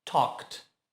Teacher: Som de K, sem voz. Acrescenta ED e fica talked.